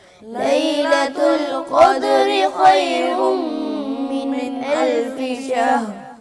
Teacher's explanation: فا کو آگے ملا دیتے ہیں، فا کا شین میں ادغام نہیں کرنا، اس کو علیحدہ ہی پڑھنا ہے